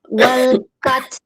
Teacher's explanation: Enggak wal fath, bukan ta aja tapi h-nya ngalir